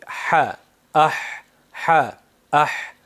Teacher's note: u portlab emas, balki ha undoshi sirg'alib hosil bo'ladi.